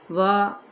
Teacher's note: و ہونٹوں کی ناتمام گلائی کے ساتھ